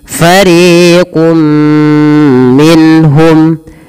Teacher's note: bacaan kita namakan dengan izhar yang artinya jelas apa yang dijelaskanitu menjelaskan suara nunnya tanpa ada embel-embel ya menahan